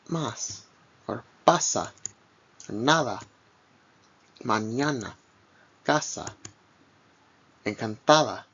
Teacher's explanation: like the A in father, but a little bit shorter